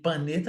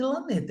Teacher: Eu tenho dois sons. Eu tenho encontro consonantal, duas letras, dois sons e na mesma sílaba.